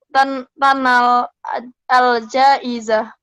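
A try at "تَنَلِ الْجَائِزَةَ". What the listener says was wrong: Dibaca barisnya. Tanal al-jaizata. Kita belajar nahu sekalian baris akhirnya dibaca juga. Tanal al-jaizata.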